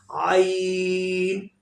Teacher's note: Throat letters, middle throat, pronounce ain by middle throat. हरूफ हल्की, ये हरूफ हल्की है, इसको दरमियाने हलक से अदा करेंगे. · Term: throat sound letter